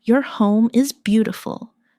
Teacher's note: Stress beautiful to make the compliment sound genuine.